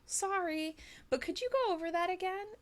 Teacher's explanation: make sure that your intonation Rises up